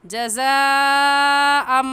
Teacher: तनवीन के बाद हुरूफ़ यरमलून में से मीम आ गया है, इस वजह से यहाँ पर गुन्ना इदगाम के साथ करेंगे